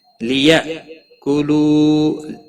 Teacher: حمزہ ساکن کو تھوڑا جھٹکے کے ساتھ پڑھنا ہے